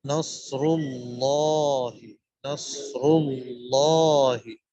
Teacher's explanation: نصر اللہ، لفظ اللہ کا لام بھی موٹا ہوگا. صاد، را اور لفظ اللہ کا لام تینوں کے تینوں موٹے